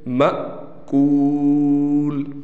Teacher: اسی طریقے سے یہ بھی الف لکھا گیا ہے، لیکن اس پر جزم آ گیا، اب یہ الف نہیں ہے بلکہ حمزہ بن گیا، اور حمزہ ساکن حالت میں جھٹکے کے ساتھ پڑھا جاتا ہے